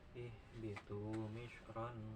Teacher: tanwin menghadapi fa ya. Kalau diwakaf misro, tapi kalau disambung mah misrong. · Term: Ikhfa